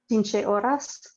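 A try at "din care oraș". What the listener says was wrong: Dinche Oraș. With a sh.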